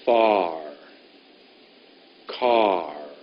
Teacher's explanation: my tongue goes up at the very last minute